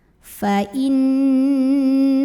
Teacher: Maka cara membunyikannya adalah didengungkan, ditahan bunyi dengungannya kurang lebih 2 harokat. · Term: gunnah musyaddadah